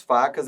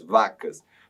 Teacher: A única diferença que eles possuem entre si é a sonoridade. Note que o F é surdo e o V é sonoro.